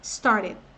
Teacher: é comum que o started, você ouça uns americanos aí falando started. Com som de R de carinho, barata, barato